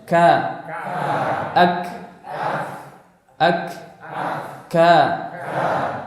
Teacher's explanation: pangkal lidah itu menyentuh antara kedua langit-langit. Ya. Jadi di tengah-tengah antara langit-langit lunak dan langit-langit keras. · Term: kaf